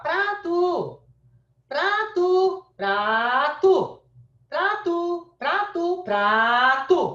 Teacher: Então, ó, o A, ele é mais comprido. Quer dizer que a sílaba mais forte é pra. Não é a última.